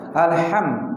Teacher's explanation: Seharusnya alham dia berada di wastul khalqi. Di tengah-tengah tenggorokan. Kita kembalikan ke pangkal tengkorokan.